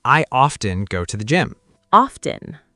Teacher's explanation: In American English, most people say often with the T sound clearly heard.